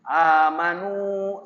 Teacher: Seperti amin, amanu, 2 harokat. Tidak boleh lebih. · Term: mad badal